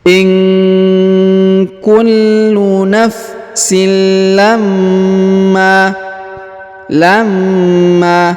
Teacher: huruf Ma ditahan dan ditekan karena berharakat tasdid lalu kita panjangkan dua harakat